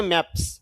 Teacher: তাহলে এস যোগ করলে সেটি স মানে দন্তসর মত উচ্চারিত হয়